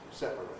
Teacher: In separate, there can be no compression. It's got to have 3 syllables, separate.